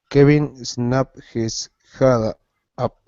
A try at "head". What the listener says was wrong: Bueno, en vez de pronunciar la J así tan fuerte, okay, la H en inglés suena más como que uno está respirando. Menos sonido, right? So it's his head. Just like you're breathing. Kevin snapped his head up.